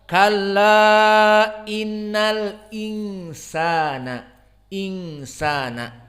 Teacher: mereka membaca dengan adamu naql dan adamu saqat bal tahqiq al-hamzah